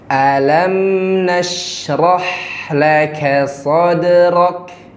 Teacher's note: Bukalah al-jawf (ruang kosong di dalam mulut) untuk vokal a, jangan mengucapkannya eh, tetapi a.